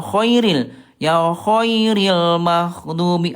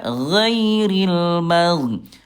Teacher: Nah kalau kho dia hams ya kho ada udara. Ini Bunda hati-hati huruf ghain kalau ada udara nanti hurufnya akan tertukar dengan kho. · huruf ghain dia jahar, tidak ada udara. Nah kalau kho dia hams ya kho ada udara.